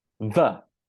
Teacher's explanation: the voiced TH is exactly the same in terms of positioning, but you just bring your voice into it. So it is pronounced like in the word the.